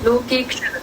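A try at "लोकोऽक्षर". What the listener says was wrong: Loke is A, na? It has to be O.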